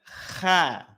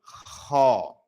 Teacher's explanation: Nah, jangan kha tidak kha tetapi ko dia menebal. Kalau menebal maka pelafalannya akan condong pada vokal o.